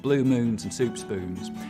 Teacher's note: I'll start off with very fronted goose vowels, blue moons and soup spoons, but they'll get less and less fronted the further west I go.